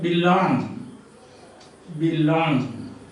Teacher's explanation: I am, this mark like this. You have unstressed, stressed, two syllables.